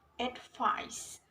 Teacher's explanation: two syllables words with stress on the second syllable